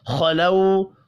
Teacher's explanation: खा हुरूफ़ मुस्तअलिया है, पुर पढ़ा जाएगा। लऊ वाव लीन है।